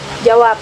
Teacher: bunyi B pada kata jawab bisa dilafalkan sebagai bunyi P dan juga sebagai B. Sehingga kata jawab itu bisa dilafalkan sebagai jawab pakai B dan bisa juga pakai P. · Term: netralisasi